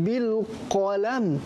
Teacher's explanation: huruf qaf dibaca tebal. Tapi apabila dibaca tak tebal, bunyilah bil kalam ka. Bil kalam, bukan bil qalam.